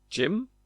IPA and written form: dʒɪm (gym)